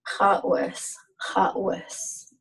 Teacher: well with what this is a W and objective W and it's got that creaky sound because of the tightening your throat